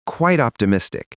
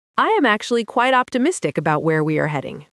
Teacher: notice how quite and optimistic blend together almost without a gap. Quite optimistic, not two separate words with a pause in between.